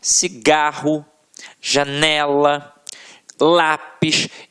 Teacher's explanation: a sílaba que a gente proferiu com mais força sempre esteve na penúltima sílaba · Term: paroxítonas